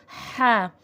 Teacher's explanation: اور ہا کا بھی پراپر ساؤنڈ دیں گے۔ ہا حرف حلقی میں سے ہے اور یہ والا ہا حلق کے درمیان والے حصے سے ادا ہوتا ہے